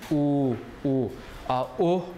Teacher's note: you see your lips have to be uh in a round position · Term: round your lips